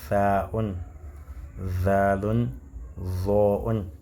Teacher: Quand on dit Tha'un, Zalun, Zo'un, il y a, on ressent, on voit comment les dents, les incisives supérieures sont en contact avec le bout de la langue